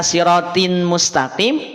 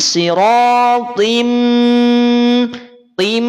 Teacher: Jadi sirotim tim ini yang dimaksud dengan idgham, memasukkan bunyi tanwin atau nun sukun pada huruf idgham. Di sini huruf idghamnya adalah huruf mim, maka bunyinya yang semula in dia akan berubah menjadi im.